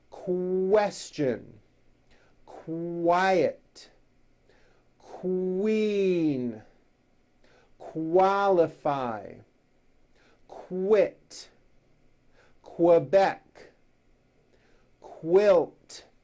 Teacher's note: Q sounds are made with the K sound, k, and the W sound, w, put together.